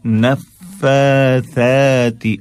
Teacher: فا اور ثا دونوں پر کھڑا زبر ہے، ایک الف کے برابر ہم کھینچیں گے